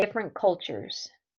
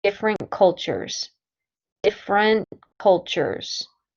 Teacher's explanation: I don't pronounce the T in different.